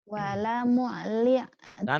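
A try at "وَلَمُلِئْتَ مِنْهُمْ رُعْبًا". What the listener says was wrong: Jangan diteken. Wala muli tamin hum ru'ba. Jangan, jangan walamu, jangan mimnya jangan diteken. Ditekennya dari lam. Wala muli tamin hum ru'ba.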